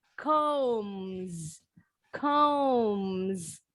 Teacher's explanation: voice sound, final S-nya bunyinya harus sama yang bergetar juga.